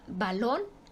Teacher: derecha a izquierda por ejemplo la palabra balón su es aguda su sílaba tónica está en lon la última sílaba